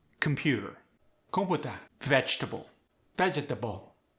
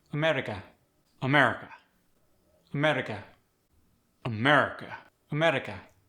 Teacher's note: timed language that means when you're speaking with a KEH accent each syllable gets equal stress